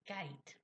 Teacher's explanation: the g sound, you can see it being formed back here and at the back of my mouth, but children can't see that, and they think what's happening is d and g, same thing is happening, same sound.